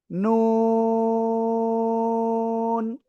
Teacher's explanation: জিহ্বার আগা, তার বরাবর উপরে তালুর সাথে লাগিয়ে আপনার 4 আলিফটা নিয়ে এই অক্ষরটা উচ্চারণ হবে।